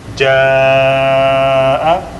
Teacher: Okay, ja'a, this, let's say it was ja by itself is 2 haraka long because we have alif preceded by fatha and there is nothing after, so it's 2 haraka long. If I put hamza, it's gonna become ja'a, so it's 4 or 5 haraka long.